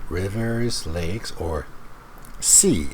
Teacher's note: notice the rising intonation rivers lakes or sea and then falling on the last item